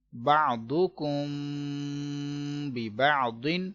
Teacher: اس کلمے میں میم ساکن کے بعد با رہا ہے، اخفاء شفوی کا قاعدہ ہو رہا ہے، گنہ کریں گے